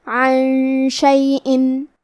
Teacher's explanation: یہاں حکم ہے اخفاء، تو ہم یہ حکم کو غنہ کے ساتھ ادا کریں گے